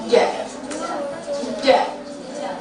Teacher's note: Ja, menekan ke langit-langit atas, lidah bagian tengah.